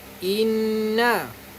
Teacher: Kena dengung 2 harakat. Tahan 2 harakat. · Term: nun syaddah